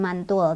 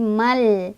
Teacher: Karena ada alif lam bertemu dengan huruf qamariyah yaitu qaf. Cara bacanya alif lamnya dibaca jelas. Jangan jangan mantul, tapi mal. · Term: alif lam qamariyah